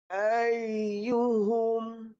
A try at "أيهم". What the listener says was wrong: Dah ada tapi samar. Buat sampai jelas. Pertama dia kena lembutkan lidah. Lidah tu kena buat latihan tapi kena lembutkan. Nanti dia naik sampai atas. Kenapa dia masih sukar untuk dia naik sampai atas? Sebab lidah tu dia perlu dilengkung.